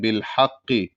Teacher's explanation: بڑا ہا کو قاف میں ملائیں گے